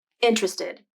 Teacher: the more common pronunciation is interested as three syllables and that first t sound is pronounced